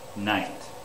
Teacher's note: the air goes through the nose for night